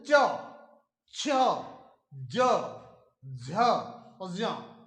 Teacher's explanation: आपकी जीभ है वो बिल्कुल जो तालु है उस पर जाकर टकराएगी।